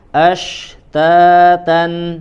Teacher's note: Huruf shin ya juga dia harus terdengar jelas, ada aliran nafasnya di dalam ya, aliran nafas dan suaranya.